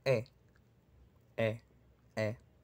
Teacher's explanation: Aunque bueno, en mi dialecto yo no diría sino e, e. Un poquito más abierto. Cosa típica del dialecto caribeño.